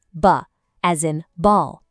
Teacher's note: B is just a really soft pop of the lips, absolutely no voice trailing after it